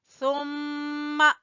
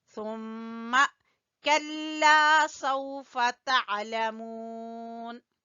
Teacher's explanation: میم مشدد کا غنہ ادا کریں گے